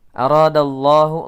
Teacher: Madza ra mad tabi'i dal ya, bunyi dal langsung masuk pada lamul jalalah mufakhamah karena ya mufakhamah itu tebal, lamnya dibaca tebal karena bertemu dengan huruf dal ya, huruf dal sebelumnya berharokat fathah